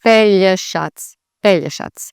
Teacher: emphasis on the first part of the word, not the middle or the end · the C that's a ts, not a k or anything like that